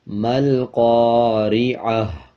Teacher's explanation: وقف کریں گے، ہا بن جائے گا اور پیش کو سائلنٹ کر دیں گے، اور وقف کرتے ہوئے ہا کی آواز آدھی آئے گی۔ مل قارعہ، امید ہے آپ کو اچھی طرح سمجھ آ گئی ہوگی۔